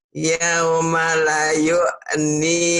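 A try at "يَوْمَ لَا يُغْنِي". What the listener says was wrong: Lanya panjang. Yaumala yugni.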